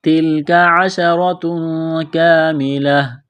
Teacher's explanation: کرنا ہے، را کو موٹا کرنا ہے زبر کی وجہ سے، تنوین کے بعد کاف ہے، آواز ناک میں چھپائیں گے، غنہ کریں گے ، کاف الف زبر کا ایک الف کے برابر کھینچنا ہے،